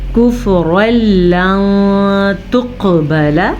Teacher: نون ساکن کے بعد تا حروف اخفا میں سے ہے تو ہم نے نون ساکن کو چھپے ہوئے غننے کے ساتھ پڑھا۔ قاف میں ہم نے قلقلہ کیا، قاف حروف قلقلہ میں سے ہے، اس پہ جزم آ گیا ہے اور موٹا بھی پڑھنا ہے۔